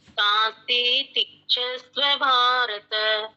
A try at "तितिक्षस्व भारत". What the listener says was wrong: तांस्ति लंबा कर दिया, ये तांस्थितिक्षस्व है।